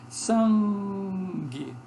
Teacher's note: O G é velar, quando uma consoante nasal ocorre antes desse G, que é velar em português, a consoante nasal sofre também uma aproximação do G e se torna velar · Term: nasal velar